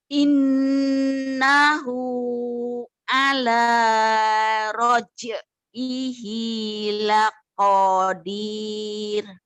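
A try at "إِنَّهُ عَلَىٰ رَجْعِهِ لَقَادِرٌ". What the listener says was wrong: Kenapa panjang? Karena setelah mannya ada 2 huruf. Laqadir gitu Bu. Terus tadi Ibu mohon maaf Bu, di in-nya tuh Ibu agak ketahan. Innahu, jangan. Innahu.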